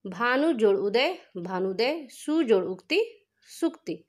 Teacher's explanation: अब ये 7वां नियम देखिए, ह्रस्व उ और ह्रस्व उ समजाति हैं। ये भी ह्रस्व उ और ह्रस्व उ का मेल होता है तो बन जाता है दीर्घ उ